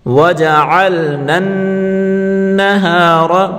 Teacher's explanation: نون کو نون کے ساتھ ملا کر پڑھیں گے اور نون مشدد کو ہمیشہ گنے کے ساتھ پڑھیں گے، یعنی یہاں گناہ کریں گے.